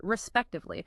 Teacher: you notice how the emphasis is on the second syllable spec. It's a longer word, so getting that rhythm right is uh is really important. · the emphasis is on the second syllable spect